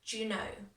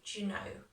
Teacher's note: Now, when I say do you know, it kind of merges together.